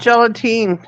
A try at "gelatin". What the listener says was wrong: It's gelatin. There's not supposed to be an A.